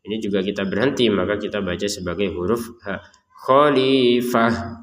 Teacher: taknya kita baca sebagai huruf ha kalau berhenti